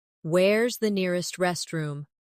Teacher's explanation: Where is the nearest restroom? In fast speech, where is sounds like where's.